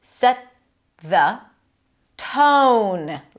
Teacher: Set the set the connect these two together. T on the teeth and then it releases to a th